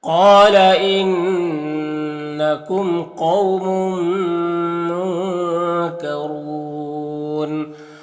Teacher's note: یہاں پر نون ساکن کے بعد کاف حروف اخفا میں سے تو نون میں اخفا ہوگا. نون کے آواز کو ناک میں چھپا کر ایک الف کی مقدار کھینچ کر پڑھیں گے